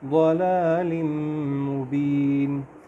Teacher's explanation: میم کے اوپر شد ہے، اس پہ ہم غنہ کریں گے۔